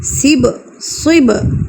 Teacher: ساکن ہے تو با پر ہم نے قلقلہ کرنا ہے یعنی کہ ہم نے اس کو ہلا کے پڑھنا ہے. صب، با کو ہم ہلا کے پڑھیں گے.